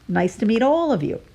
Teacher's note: We lengthen the syllable all, and because we are using my American accent, the T in meet gets a light tap at the top of your mouth, so it sounds like a cross between a T and a D.